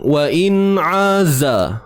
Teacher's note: Huruf ain tengah kerongkong.